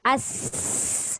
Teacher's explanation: Kalau desir sin, as. Dia berdesir dan keluar angin.